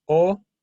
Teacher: an O and it's deep and longer.